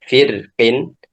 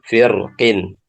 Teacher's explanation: jadi bisa dibaca tipis firqin, bisa dibaca tebal firqin. Ya, boleh dua-duanya karena di sini teridentifikasi bahwasanya huruf setelah ro itu adalah kasroh juga.